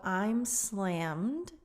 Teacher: the M goes straight into the D sound.